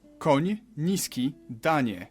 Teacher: You start with an N and soften it to ni.